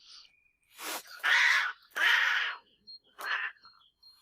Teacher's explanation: to one second long can be a bit longer sometimes and it's voiced and it's often relatively low pitched compared to other cat sounds and it's often also very harsh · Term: snarling